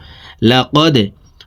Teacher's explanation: লাম জবর লা, কফ দাল জবর কদে, লাকদে, দাল কলকলার হরফ নিচের দিকে ধাবিত করে ধাক্কা দিয়ে উচ্চারণ করব।